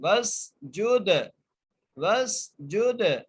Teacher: جیم کو دال سے ملائیں گے، دال پر قلقلہ کریں گے